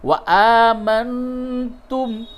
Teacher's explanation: حمزہ کھڑا زبر آ کو تھوڑا کھینچے